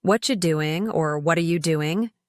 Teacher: with the stress on what and doing while the middle words blend together naturally